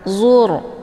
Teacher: Kemudian dzur, ini ra sukun. Hukum bacaannya adalah tafkhim, yaitu ra yang mesti dibaca tebal. Karena sebelum ra sukun, harokatnya adalah zummah, yaitu huruf dha.